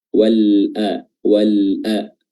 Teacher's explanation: Di sini ulama tajwid mengkategorikan dia sebagai alif lam izhar atau alif lam qamariyah, di mana lamnya di sini kita baca jelas, kita baca izhar ketika dia bertemu dengan huruf hamzah.